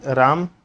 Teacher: जैसे हम नाटक में राम बोलते हैं या श्याम बोलते हैं तो थोड़ा सा लंबा बोलते हैं राम को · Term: पुलुत स्वर